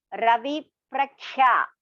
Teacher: it's not Pragya. It is Prakhya. Ka is Mahaprana.